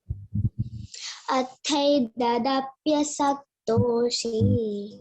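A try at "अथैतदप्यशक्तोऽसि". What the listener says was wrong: Don't say saktosi, it is sha. See, there is a thing, slanting line on the yes, isn't it? Yes, you have got a slanting line on yes.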